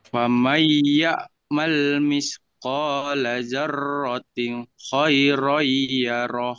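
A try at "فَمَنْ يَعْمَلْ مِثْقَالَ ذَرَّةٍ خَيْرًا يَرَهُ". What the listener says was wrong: Jangan daroting. Ini kamu belum ngerti tajwidnya berarti ya. Ini kalau tanwin ketemu kho bukan daroting tapi darotin. Jadi ada yang idhar. Setelah nun mati atau tanwin itu ada yang dibaca jelas.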